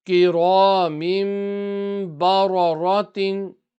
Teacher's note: all the three ra's have got zabar, so full mouth.